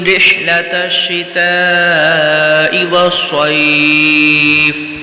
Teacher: تا کو شین سے ملائیں گے، شین مشدد ہے اور شین کو بغیر کھینچے پڑھیں گے۔ تا یہاں پر مد متصل کا قاعدہ لگ رہا ہے، تو اس کو کھینچیں گے۔